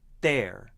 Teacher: With a lifted tongue blocking the airflow, there. It sounds like a D consonant, there, because my tongue is blocking the airflow.